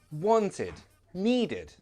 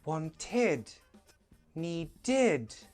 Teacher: It's always id, wanted, needed. And it's a very weak id. It's never stressed.